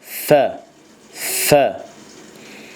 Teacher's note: Birinci məxrəc fə hərfinin çıxdığı məxrəcdir. Yəni yuxarı kəsici dişlərə alt dodağın yəni yaş yerini, yəni iç tərəfini təqribən vurmaqla, vurmaqla yəni bu səs fə hərfinin səsi ortaya çıxır və bu cür səslənir.